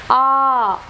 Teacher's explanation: it is unrounded back open vowel